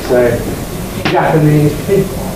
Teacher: There are several Japanese students, and you can hear this apparent shift of the greatest prominence onto the first syllable of this adjective.